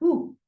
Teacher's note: damma means like you're putting things together like ooh. So you're putting your lips together to create the ooh.